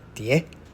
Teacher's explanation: in Taiwan it's often pronounced with the second tone